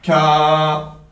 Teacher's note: Le kef, pour répéter, il va venir toucher le palais dur, donc l'endroit où dans notre bouche on a l'os